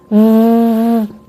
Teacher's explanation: Agora faço o mesmo com som de V longo. A vibração parece claramente porque o V ele é um som sonoro. É a mesma posição de lábios, mesma saída de ar.